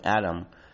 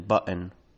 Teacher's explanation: some varieties recently flapping the t between vowels, such as in the word atom, or even turning it into a glottal stop, as in button